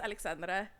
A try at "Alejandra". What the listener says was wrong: It's spelled with an X, but it's pronounced Alejandra.